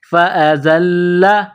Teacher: فَأَزَلَّهُمَا الشَّيْطَانُ فا کے اوپر زبر، اس کے بعد الف، الف کے اوپر زبر ہے، اس کو حمزہ پڑھیں گے. زا میں سیٹی کی آواز پیدا کرنی ہے، زا کو لام کے ساتھ پلس کرنا ہے.